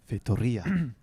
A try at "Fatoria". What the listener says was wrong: Not too bad. The R is still awful, but Well, it's a very Portuguese R. Fatoria. it's a rolled R.